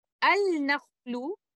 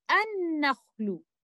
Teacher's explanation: So here, Idgham Kamil will happen. Lam At-Ta'arif will completely merge into letter Noon. Instead of saying it like this, Al-Nakhlu, we say An-Nakhlu.